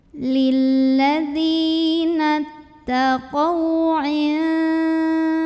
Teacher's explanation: ada huruf lin karena ada waw sukun sebelumnya fathah. Maka cara membunyikannya cukup dilembutkan